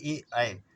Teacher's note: तो ए ऐ कंठतालु होता है